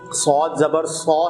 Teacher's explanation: بڑی حرکات کا حرف ہے تو اس کو بغیر کھینچے پڑھنا ہے، کیونکہ حروف مستعلیہ کا حرف ہے تو اس کو موٹا کر کے پڑھنا ہے